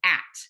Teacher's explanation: dropping the initial consonant in words so if they're saying at for cat